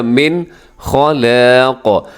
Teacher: من نون ساکن کے بعد خا حروف حلقی میں سے ہے، اب یہاں اظہار کیجیے گا من خلاق. اب یہاں پہ کیا ہے، خا موٹا ہے، لام باریک ہے، ساتھ الف بھی باریک ہے، اور قاف موٹا کرنا ہے.